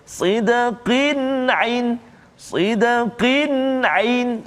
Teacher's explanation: tanwin bertemu dengan huruf ain, maka kita tak boleh baca dengung kat situ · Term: izhar halqi